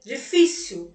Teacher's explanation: Terminou em L e a tonicidade recaiu no fi, do difícil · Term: Paroxítona